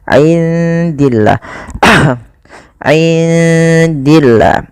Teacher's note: Kemudian pada lafal indillah, indi di sini ada bacaan ikhfa, maka suara nunnya samarkan kepada huruf dal